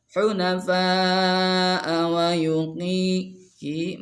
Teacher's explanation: mad asli, awas nggak boleh lebih dari 2 harkat